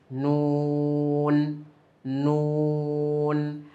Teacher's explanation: নয় নাম্বার মাখরাজ জিহবার আগা তার বরাবর উপরে তালের সঙ্গে লাগিয়ে উচ্চারিত হয়। নুন ন এখন এখানে নুন বলতে গেলে কিন্তু যে পেশের একটা ভাব আসে।